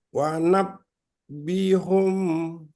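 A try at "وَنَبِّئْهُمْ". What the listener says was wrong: Wanabbi, bi-nya agak dihentak. Bi-hum.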